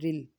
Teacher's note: را کے نیچے زیر ہوگا تو ہم اس کو نرمی سے پڑھیں گے